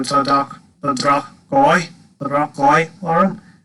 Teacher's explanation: It's a bit like a guttural G sound, this DH.